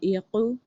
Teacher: عین کی آواز الگ، قاف کی آواز الگ، موٹا قاف ادا کریں گے